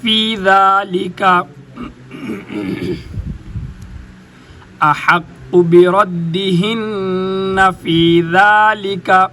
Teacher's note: اوپر والے دانتوں کے ساتھ زبان کو لگائیں گے ذال ادا ہوگی، اور اگر نیچے والے دانتوں کے اندر والے حصے کے ساتھ زبان کو لگائیں گے تو زا ادا ہوگی۔